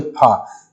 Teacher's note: जब आप फा बोलते हैं ओठ जो है एक दूसरे से स्पर्श कर रहे हैं, इसीलिए इसका उच्चारण स्थान ओष्ठ बताया जा रहा है।